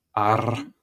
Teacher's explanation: The main difference with Scottish, I always think, is the R is rolled.